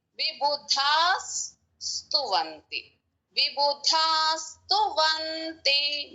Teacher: మా త్రైవిక్రమాది చరితం విబుధాస్తువంతి, ఇక్కడ దా దీర్ఘము మహాప్రాణం ఉంది, దాని తర్వాత విసర్గ ఉంది. సా ముందు వచ్చిన విసర్గ కాబట్టి ఎస్ సౌండ్ పలకాలి అక్కడ. విబుధాస్తువంతి, విబుధాస్తువంతి మహాప్రాణం పలుకుతూ ఆ విసర్గ సౌండ్ను కూడా పలకాలి.